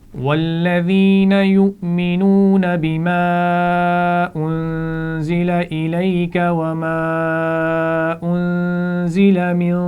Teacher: ایک دفعہ پھر پڑھیں گے اور اس میں یہ خیال رکھیے انزلہ نون کے بعد نون پر جزم ہے اور اس کے بعد حروف حلقی بھی نہیں ہے، لام اور را بھی نہیں ہے تو یہاں پر غنہ کرتے ہوئے پڑھیں گے